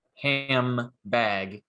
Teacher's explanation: one of them we get rid of the d and now the n isn't happy anymore because it's alveolar and it's next to a bilabial consonant so the nasal becomes an m instead